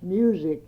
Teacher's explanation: the word was pronounced music with a Z sound